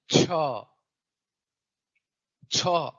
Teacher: इन व्यंजनों में जी तालू को स्पर्श कर रही है और मुख से वायु घर्षण के साथ बाहर निकल रही है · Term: स्पर्श संघर्षी